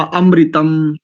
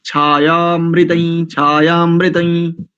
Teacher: अरे अकार का लोप हुआ है भाई, वहां छायामृतई छायामृतई ऐसा उच्चारण होगा।